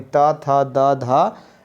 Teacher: तवर्ग यानी त, थ, द, ध जो है न और ल और स, इसमें जो है दांत का हेल्प लिया जाता है